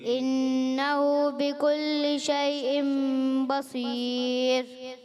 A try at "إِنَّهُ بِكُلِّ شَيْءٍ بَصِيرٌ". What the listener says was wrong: بصیر میں صاد. اچھا جہاں جہاں موٹے حروف آتے ہیں نا، آپ نے کوشش کرنی ہے اس کو درست کریں.